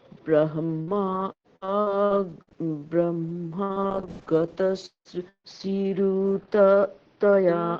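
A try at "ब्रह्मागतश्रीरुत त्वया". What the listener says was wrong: শ্রী দীর্ঘটা টানতে হচ্ছে আবার। গতশ্রীরোতত্বয়া আ, বলুন।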